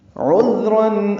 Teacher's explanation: عین وسط حلق سے ادا کریں گے